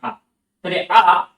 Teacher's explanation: এটা উচ্চারণ করার সময় জিভা আমাদের উপরে উঠে আসে না পেছনে যায় না বা সামনে যায় না বা পেছনে যায় না ঠিক জিভা মুখের মধ্যে আমাদের ঠিক মাঝামাঝি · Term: মধ্যস্থ সরধ্বনি